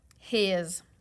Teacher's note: the S we know s has two sounds s and Z we know after a short vowel sound that the S is going to make a Z Sounds